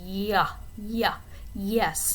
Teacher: make a ya sound and you can feel your tongue kind of roll from the alveolar area all the way to the back. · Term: palatal sound